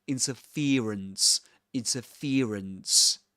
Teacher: in this accent, this ear diphthong is usually replaced by E, by an E sound.